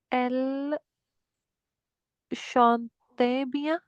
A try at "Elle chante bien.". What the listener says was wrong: Chante. remember the silent letters? We don't pronounce NT.